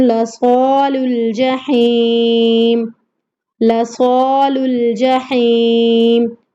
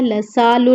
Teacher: صا کو موٹا پڑھنا ہے، حروف مستعلیہ میں سے ہے، لسال نہیں پڑھنا ہے اس کو کیونکہ سین کی آواز آئے گی۔